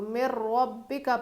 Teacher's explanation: نون نہیں پڑھیں گے ہم لوگ، نون پڑھنے میں نہیں آئے گا. اسی کو ادغام کہتے ہیں.